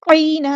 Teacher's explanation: یا لین آگے نرمی سے موڑیں گے، مد لین کریں گے · نرمی سے موڑیں گے، مد لین کریں گے اور یہاں پر وقف کرتے ہوئے دو زبر کو ایک زبر میں کنورٹ کر دیں گے اور مد اصلی کریں گے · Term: وقف بالابدال